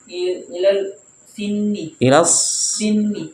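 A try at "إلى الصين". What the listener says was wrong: Ilas sini. Jangan ditasdid. Ilas Ya, ilas sini.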